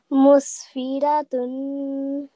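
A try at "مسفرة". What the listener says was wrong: Very nice. Try to make your mouth round when saying the ra with the fatha.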